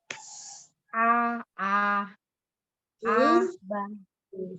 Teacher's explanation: Suaranya masuk ke hidung, keluarkan lewat rongga mulut, dorong ya. Tidak tidak naik ke hidung.